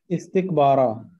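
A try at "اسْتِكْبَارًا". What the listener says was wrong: नो अलिफ तो नहीं पढ़ा आपने। हाँ जी, बा भी दो सेकंड करें और रा भी दो सेकंड, दोनों की बैलेंस होना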